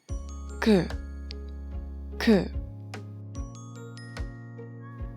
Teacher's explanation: The first consonant is 기역, 기역, and it has a sound of K or G. It sounds more like between K and G sound.